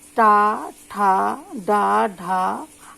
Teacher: इनके उच्चारण में जीभ है कठोर तालु को छूती है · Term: मूर्धन्य